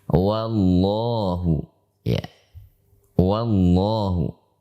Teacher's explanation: walaupun setelah wawu langsung dibaca tebal karena ada lafaz Allah di sana, maka wawu tidak boleh dibaca tebal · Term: huruf tipis